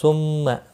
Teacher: میم مشدد پر غنہ ہوگا